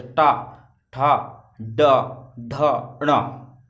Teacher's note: जीभ देखो चा में और पीछे थी, टा में थोड़ी आगे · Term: मूर्धन